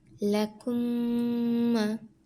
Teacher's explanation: সম্পূর্ণ ঠোঁট মিলিয়ে গুণনা করে পড়তে হবে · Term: মিম সাকিনের ঈদগাম